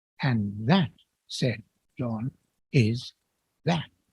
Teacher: the last two words can be pronounced, as I did, as two stresses, just as John might speak them, giving us a pair of final beats